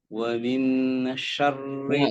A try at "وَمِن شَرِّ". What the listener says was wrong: Jangan izhar ya. Ikhfa. Wa min syarri. Nunnya jangan dibaca jelas. Jangan wamin. Samar. Suara nunnya disamarkan ya.